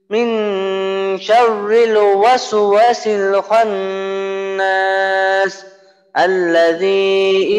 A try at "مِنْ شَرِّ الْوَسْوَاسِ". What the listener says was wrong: এই যে চতুর্থ আয়াতটা মিং রিল র পাতলা এবং ওয়াস ওয়াসিল, এইটা আরেকটু খেয়াল করে বলতে হবে।